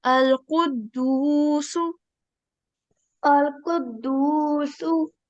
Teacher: you read your Waw Madhya very well as you prolonged it for 2 seconds